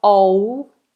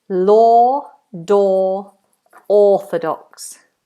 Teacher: It's a long vowel. It's a big space in the mouth and it's far back